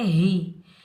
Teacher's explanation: اس ہا کو سینے سے ادا کریں گے